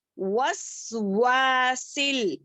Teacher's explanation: वाव को अच्छे से पढ़े, होठों को गोल करने से